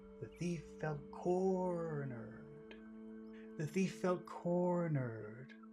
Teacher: corner is the important word in that first phrase